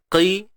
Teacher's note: Qaf baris bawah. Qi. Masih lagi sifat tebal dia kekal.